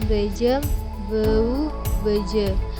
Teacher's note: Bunyi B plosif bilabial